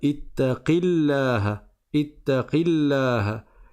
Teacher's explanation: on passe du qaf directement au lam et on ne prononce pas la prolongation qui est à la fin du mot